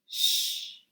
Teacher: The sh sound is a weaker sound than S. It's a little weaker because the air is not hitting into a small space.